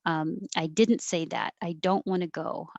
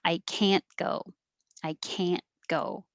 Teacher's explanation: in regular conversation you won't usually hear the t and it will sound like can and it will be emphasized if it's the negative word in a sentence it's usually emphasized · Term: negative can't